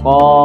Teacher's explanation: Kita praktekkan juga dengan panjang yang sama, 3 alif 6 harokat. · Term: huruf qaf